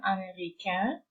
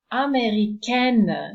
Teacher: this combination of letters is also pronounced as a nasal sound, américain, and the feminine is américaine, so no longer a nasal, and the N is pronounced at the end